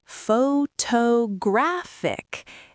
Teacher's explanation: The A in graph is now the peak. · The stress moved again. Now it is on the third syllable.